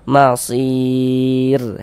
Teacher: Nah, kalau kita membaca Al-Qur'an, kita berwakaf ya, kita berhenti tepat di huruf yang tidak dibaca panjang ee hurufnya itu kita sukunkan, hurufnya itu kita matikan seperti itu. Ini kita berwakaf di huruf ra, huruf ra tidak dibaca panjang. Nah, makanya kita sukunkan sehingga kita baca masir seperti itu. · Huruf ro tidak dibaca panjang, makanya kita sukunkan sehingga kita baca masir, seperti itu.